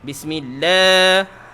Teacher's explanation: nama Allah ni kita memang nak kena baca panjang 2 harakat